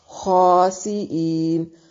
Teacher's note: خا کو موٹا پڑھیں گے کیونکہ یہ حروف مستعالیہ میں سے ہے